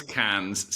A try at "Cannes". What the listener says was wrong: Can? You do pronounce the S.